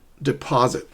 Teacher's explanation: stress the second syllable, not the first, not the third, but the one in the middle